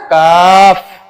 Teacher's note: ये जबान की जड़ और तालू के सखत हिस्से से अदा होता है